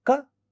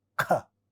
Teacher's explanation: And then when you see the differences between ka and kha, you see ka is not aspirated, but kha is aspirated. That is, there is an extra flow of air that we see when we say ka, less flow of air, kha, more flow of air.